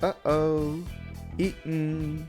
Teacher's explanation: So you should make the glottal stop and follow it with an N sound